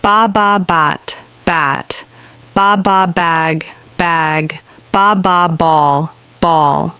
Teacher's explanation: bat you won't feel a puff of air like with P your throat does vibrate when you say B put your hand on your throat and say B you will feel a vibration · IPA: /b/